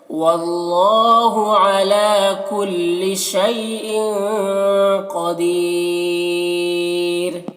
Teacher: کلی شی میں یا لین سے نرم آواز کے ساتھ جلد پڑھیں گے. ان کی تنوین میں اخفا ہو رہا، تنوین کی آواز کو ناک میں چھپا کر پڑھیں گے. قدیر میں قاف کو پر پڑھیں گے.